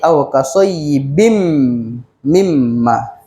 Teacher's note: dia adalah aqin betul bila tanwin kita akan baca bin betul jadi bin itu kita masukkan terus kepada mim dia akan jadi aqim mimma ini memang mulut kena rapatlah tak adalah buka-buka sikit buikit tak